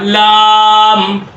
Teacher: زبان کی کروٹ آپ کے اوپر کے 4 دانتوں کے مسوڑوں پہ لگے گا تو جو ہے وہ آپ کا لام ادا ہوگا